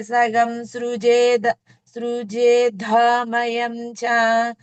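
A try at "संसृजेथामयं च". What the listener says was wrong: సంసృజే ఏమనాలి? సగం కాకుండా సంసృజేథామయంచ. తీసేయండి. సంసృజే.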